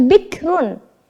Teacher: maka kita membacanya tipis roknya atau tidak perlu mencucu tidak perlu terlalu lebar juga bix tidak ya tapi dikit saja seperti itu ya Coba kita